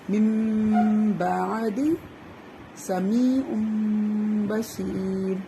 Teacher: نون ساکن یا تنوین کے بعد اگر حرف با آ جائے تو نون کو میم کی آواز سے بدل کے غنے کے ساتھ پڑھتے ہیں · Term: اقلاب